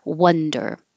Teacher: The vowel is uh. So now your jaw is high and your tongue is low in the middle and pulled back.